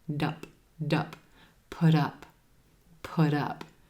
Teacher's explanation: That T at the end of put becomes a flap T because it's in between two vowel sounds. It sounds like a soft D and it links over in front of the word up.